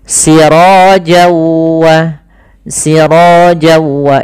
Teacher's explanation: maka n-nya hilang masuk ke wau